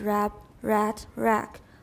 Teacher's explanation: are all distinguishable even when the final consonants are unreleased